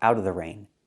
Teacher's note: We don't have to pronounce the V sound in of.